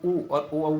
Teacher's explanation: ऊ और ओ औ बोलते हैं तो ओंठ गोल होते हैं